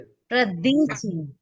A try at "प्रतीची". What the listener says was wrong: प्रदीची नहीं है, प्रतीची है। प्र फिर त तीर्थ का त, और उसमें उसमें बड़ी ई की मात्रा।